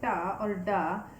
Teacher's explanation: you can feel the tip of your tongue touching your upper palate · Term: frontal consonants